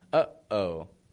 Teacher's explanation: to stop the voice and to start it again